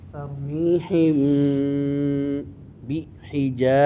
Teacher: মিম সাকিনের ইখফা হবে কারণ মিম সাকিনের পরে বা এসেছে এই জন্য গুন্না হবে